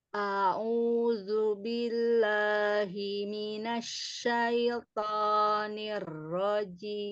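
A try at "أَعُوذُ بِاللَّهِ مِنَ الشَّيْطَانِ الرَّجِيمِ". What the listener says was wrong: Yang pertama, huruf ainnya ditekan lagi. A'u, a'u, a'u, bomahnya sempurna. A'udzu. A'udzu.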